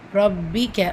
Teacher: பா ஷத்தா இருக்குது, அழுத்தம் கொடுத்து ஓதணும்.